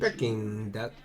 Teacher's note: You do want to stress on that king syllable. The second.